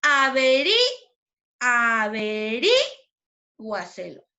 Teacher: ¿Dónde sonó más fuerte? En la sílaba ri.